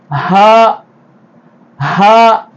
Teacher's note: ஹா தொண்டையினுடைய கடைசி பகுதியிலிருந்து